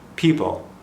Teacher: Barely audible, that L.